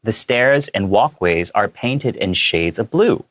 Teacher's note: The way I chose to read it is I went upwards in the intonation because I wanted to kind of show that it was in contrast to the shades of red